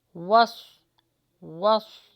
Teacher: वाव पर होठों को गोल कीजिए और स्वाद का मखरज निकालें